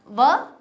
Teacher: दंतोष्ठ यानी दांत और होठों से निष्कासित किया जाता है